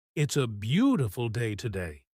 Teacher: The speed, the rising tone on beautiful, and the happy feeling in the voice.